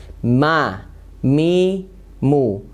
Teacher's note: Nah, ini ada perbedaannya dengan ba yang tadi. Kalau ba menempelkan dua bibir yang kuat, kalau mim dengan lembut ya. Dan pastinya disertai dengan gunnah masuk ke rongga hidung ya. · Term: huruf mim